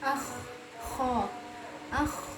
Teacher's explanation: Berarti ini dia suaranya ini tidak tertahan ya. Rokhawah artinya lancar. Suaranya lancar, tidak terhenti.